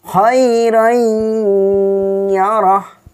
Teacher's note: Ketika fattatain bertemu dengan ya, ya dimasukkan dengan dengung, didengungkan. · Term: idgham bigunnah